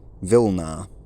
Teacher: this labiodental approximant, r, has completely hardened into a v sound